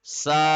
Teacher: مگر چونکہ اوپر بڑی مد آ رہی ہے، بگ مد، لہذا سا کو ہم 4 سیکنڈ لمبا کریں گے، ایسے پڑھ کے سا.